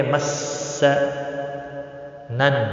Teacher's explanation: تشدید والے حرف کو تھوڑا سختی کے ساتھ پڑھیں گے۔ مس نن، نون مشدد پر گنہ ہوگا، الف مدہ بھی ہے، ایک الف کے برابر کھینچ کر پڑھیں گے۔